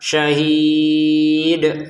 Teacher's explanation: Untuk syahid, kita membacanya selama enam harakat. Dal dikocok: syahid .